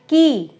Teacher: क तो हमने बहुत थोड़ा बोला और जो उसकी इ की मात्रा थी वो हमने बहुत लंबी बोली।